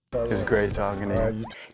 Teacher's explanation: the music or intonation Falls after the final stressed syllable · Do you hear that the words great and talking receive the stress? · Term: falling intonation pattern